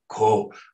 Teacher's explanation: And the fact that there is no prefixed letter or no letter here originally softens this so that you get a devoiced low register with a breathy vowel